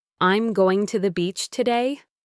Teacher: he used a rising intonation at the end of the sentence, so it sounded like a question